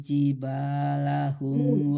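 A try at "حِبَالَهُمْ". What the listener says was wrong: Bukan jiba tapi hiba.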